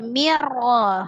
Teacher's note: Nun sukun atau tanwin bertemu dengan ro, hukumnya idgham bila gunnah. Diidghamkan ke huruf ro, tapi tidak disertai dengan dengung. Jadi tidak ada gunnahnya ya.